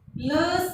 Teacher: लस बोलते ही जीभ दांतों से स्पर्श कर रही है, ये हो जाएंगे दंत्य।